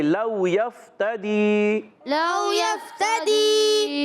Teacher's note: لو میں واو ساکن سے پہلے زبر آ رہا ہے، واولین ہوگا، نرمی سے ادا کریں گے۔ یفتدی، یا کو فا سے ملانا ہے، فا کو ساکن رکھنا ہے، فا ہلانا نہیں، بعض بچے ہلا دیتے ہیں، یفتدی، لو یفتدی، یہ غلط ہے، پڑھنا ہے لو یفتدی، لو یفتدی۔